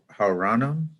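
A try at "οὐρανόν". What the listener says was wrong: The oo. there's not a rough breathing bar. Uranon. Uranon. Uranon. So tone uranon.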